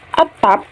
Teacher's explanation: pada kata atap di posisi akhir bibir kita menutup rapat tanpa menghembuskan udara